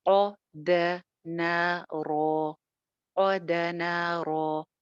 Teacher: قاف موٹا، دال باریک، نون بھی باریک اور را موٹی